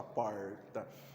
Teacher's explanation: não, eu tenho o R retroflexo. O que isso quer dizer? Que a gente coloca uma carga maior no R. Então você fala porta, você fala carga maior no R.